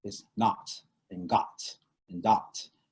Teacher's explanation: i guess the vowel is more open it's more open more open whereas and it's more the front